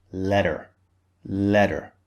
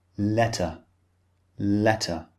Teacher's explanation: in British English the t is clearly pronounced